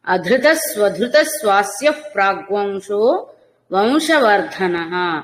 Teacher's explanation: అధృత స్వధృత మహాప్రాణ ధ్వకారాలు పలకాలండి